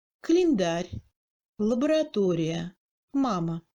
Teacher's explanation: Si le A se trouve après la syllabe accentuée ou avant, mais plus éloignée, deuxième syllabe avant l'accent ou davantage, le A devient encore plus court et pratiquement réduit à un son ressemblant au E muet français, moyen entre le U et le A